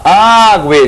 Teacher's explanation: Olha lá, ague, G-U-E. O U é fracamente pronunciado. Depois dele vem o E.